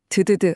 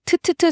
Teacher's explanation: 그래서 한국과 일본 어부들 모두 본능적으로 이 소리를 더 강하게 만든 겁니다. 혀를 입천장에 댔다가 아주 강하게 팍 터트리는 소리. 바로 티읕, 트트트 소리로 바꾼 거죠.